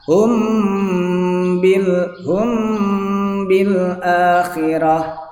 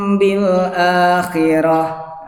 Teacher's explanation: Mimnya jadi samar karena ada disertai guna itu tapi langsung masuk ke ba. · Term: gunah